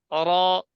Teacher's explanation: র ঠোঁট গোল হবে না। অর راء র ঠোঁট নড়াচড়া ছাড়া উচ্চারণ অর।